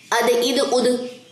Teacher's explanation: کیونکہ یہ حروف کلکلا میں سے تھا ہم نے اس کو فاسٹ پڑھا ہے، آواز باؤنس بیک ہوئی ہے